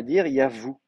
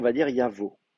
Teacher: avec la gutturale, qui est une gutturale, on va avoir un déplacement de timbre. Donc effectivement, on va dire yavo.